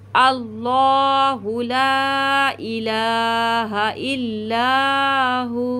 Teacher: यहाँ पे वाव साकीन हो जाएगा, और जब वाव साकीन होता है तो ये वाव मद्दा बन जाएगा, और हम इसको खींचते हुए रुकेंगे